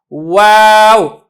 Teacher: जो वाव है ये दोनों होंठों के मिलने से अदा होती है लेकिन मुकम्मल नहीं मिलता, थोड़ा बहुत फासला रह जाता है। वाव मतलब करीब हो जाते हैं होंठ एक दूसरे के लेकिन मुकम्मल तौर के ऊपर नहीं मिलते, जिस तरीके से बा में मिलते हैं, जिस तरीके से मीम में मिलते हैं।